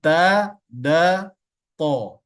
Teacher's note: ta da th itu adalah ujung lidah menyentuh bagian gigi seri tempat tumbuhnya gigi seri jadi di bawah gusi atau di tengah-tengah itu tersentuh giginya tersentuh